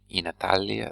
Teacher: we have a longer vowel when Italia goes with in. Italia is normal form. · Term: long A